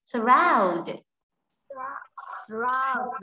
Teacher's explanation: cứ đọc là surround, mình nghe thấy từ round sẽ nhấn mạnh hơn so với âm s. Thế nên là trọng âm sẽ rơi vào chữ round, chúng ta để ý luôn phần trọng âm này luôn.